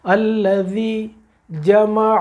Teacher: حلق سے نکالنا ہے عین کو، جیم اور میم پڑھ لیتے ہیں، عین ہم سے رہ جاتا ہے.